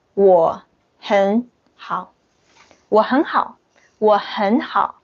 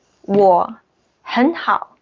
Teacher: So the third tone and third tone, we have to change the first third tone to the second tone.